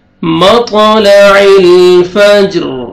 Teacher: جیم پہ قلقلہ ہے، double sound آئے گا اور را کو پر کریں گے